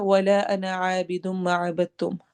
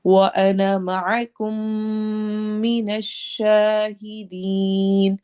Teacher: انا آتا ہے نا، تو ان سب میں انا ہم نے الف کو لمبا نہیں کرنا ہوتا. تو انا جب بھی قرآن میں کہیں پر بھی آئے گا تو اس کی الف نہیں پڑھی جائے گی، اس کا الف ڈراپ ہوگا. یہ صرف لکھنے میں آتا ہے، پڑھنے میں نہیں آتا.